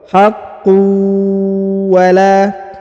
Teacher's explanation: Perhatikan harokat ya, tanwin bertemu dengan waw bertasdid, maka ditahan, ditekan, lalu didengungkan ya. Huruf unnya berubah menghilang melebur ke huruf waw.